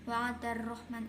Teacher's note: bacaan asyamsiyah sebab alif lam bertemu ro. Cara membacanya dimasukkan ke huruf berikutnya. Rahmanu, bacaan mad tabi'i sebab ada harokat fathah berdiri.